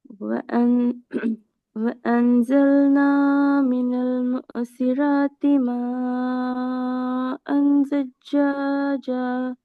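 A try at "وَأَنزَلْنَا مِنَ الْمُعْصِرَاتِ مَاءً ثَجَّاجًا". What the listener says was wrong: சஜ்ஜா என்று போகல. அது அது எத்தனை செகண்ட் எத்தனை கவுண்ட் விட்டணும்? 1 செகண்ட் தான். நீங்க அன்சல்னா நீட்டினீங்க தானே? பாருங்க. இந்த இடத்துல நீங்க நீட்டினது, இந்த இடத்துல நீட்டினது, இப்ப நீங்க இந்த ஜீமை நீட்டினது, இந்த ஜீமை நீட்டுறது, இந்த 4 இடம் என்ன செய்யணும்? எல்லாமே சேம் பேலன்ஸ்ல வரணும். பேலன்ஸ் பண்ணப்பட்டிக்கணும். மீட்டர் அளவுகள் சுமாராக லெவல்ல ஒரே லெவலா இருக்கணும்.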